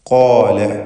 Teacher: ഖാഫും അതിൻ്റെ ദീർഘാക്ഷരമായ അലിഫും തഫ്ഖീം ചെയ്ത് സ്വരഭാരത്തോടെ ഉച്ചരിക്കണം. ഖാല കടുപ്പത്തിൽ ഉച്ചരിക്കപ്പെടുന്ന ഹർഫാണ്, ഷിദ്ദത്തിൻ്റെ ഹർഫ് കൂടിയാണ് ഖാഫ്.